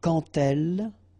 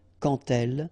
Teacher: when you will have this D, you will phonetically pronounce it like T